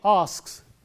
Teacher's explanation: When we say asks, it is s sound. He asks, because k is a voiceless sound, the s also is voiceless.